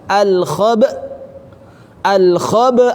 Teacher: maka hilang hamzahnya maka harus dihentakkan supaya hamzahnya kelihatan